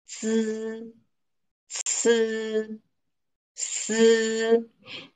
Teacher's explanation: the tip of your tongue may vibrate a little, you know, with the air.